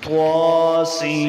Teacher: توا اور موٹا حرف بھی ہے تو توا کو موٹا کر کے بنیں گے. توا کو 1 الف مقدار لمبا کریں گے کیونکہ کھڑی زبر ہے